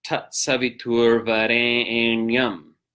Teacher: There's this A sound, Varenyam, is prolated. That means it's given extra time, it's given an extra beat. And if you don't do that, then you don't have 8 syllables.